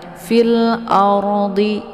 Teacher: ya di sini ada ro sukun ya sebelumnya berharakat fathah nah ini ro sukun ini dibaca tebal ya cara bacanya ujung lidahnya terangkat ke langit fil ardhi ya jangan dilebarkan mulutnya nanti keluarnya tipis jangan fil-ard